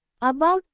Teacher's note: In about, the first a is pronounced lightly, not like its name a or the short a, and the second part, bout, has the stress.